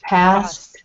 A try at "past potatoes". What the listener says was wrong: But here it's not past, but past. So we need that final consonant. Past potatoes.